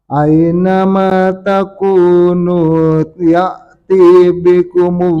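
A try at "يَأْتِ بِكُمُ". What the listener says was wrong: Ya-tinya jangan diayun. Ya'ti bikumullahu jami'a.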